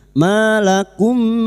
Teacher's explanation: mim sukun bertemu mim idgham mimi memasukkan atau mentasdidkan dua mim masuk pada huruf mim berikutnya disertai mendengung selama tiga harakat